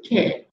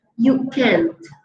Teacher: esa última consonante es la T, entonces tiene que haber un sonido un poco más fuerte para saber que nos estamos refiriendo a una oración en negativo